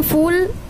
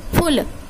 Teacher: हैं और कुछ चीजों के लिए हम टाइम लगाते हैं जैसे बड़ा यू की मात्रा लगी हुई है तो हम फूल थोड़ा टाइम ले रहा है बोलने में लेकिन छोटा यू की मात्रा लगती फुल बहुत जल्दी बोल देते